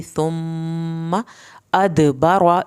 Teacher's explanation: दाल पे कलकला करना है, बारवा रा को पुर करके पढ़ेंगे।